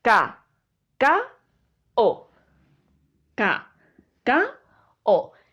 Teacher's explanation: Estas vocales están juntas en la palabra, están juntas, están seguidas, la A de la O, pero forman parte de sílabas diferentes. Y con día pasa lo mismo, es di por un lado y a por otro lado, otra sílaba. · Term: hiato